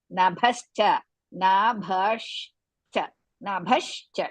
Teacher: ಭ ಇಸ್ ಮಹಾಪ್ರಾಣ the rest are all ಹೃಸ್ವ · Bha is mahaprana. The rest are all hrisva.